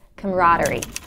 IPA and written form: ˌkɑməˈrɑː.dər.i (CAMARADERIE)